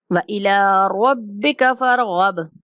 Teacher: وَإِلَىٰ لام کے اوپر کھڑا زبر ہے، ہم نے لام کو 1 سیکنڈ تک لمبا کرنا ہے، رَبِّكَ فَارْغَب۔ آخری با کے اوپر قلقلہ کریں گے ساکن ہونے کی وجہ سے